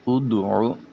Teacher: ادعو عین کو وسط حلق سے نکالیں